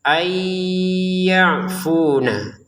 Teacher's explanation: nun sukun bertemu dengan ya dengan dengungan